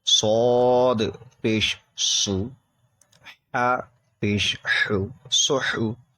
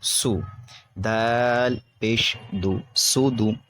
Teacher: سواد میں تھوڑی سیٹی نکلتی ہے, سین میں بھی سیٹی کی طرح آواز نکلے گی لیکن اس سے تھوڑا باریک ہوگا